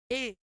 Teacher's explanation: ए वर्ण कंठ तालु में दीर्घ स्वर वर्ण है